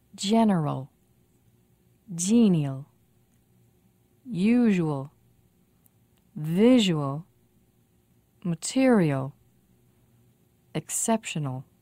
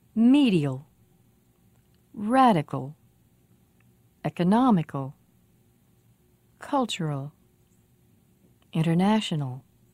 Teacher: The usual place for stress in AL words is two syllables before the AL ending.